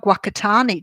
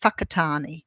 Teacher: in New Zealand, they pronounce WH as F